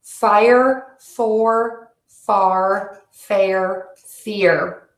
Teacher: you want to make sure that you move smoothly from one vowel to the ER and in doing that you're going to create a new vowel these aren't two separate vowels it's one vowel that we create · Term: ER sound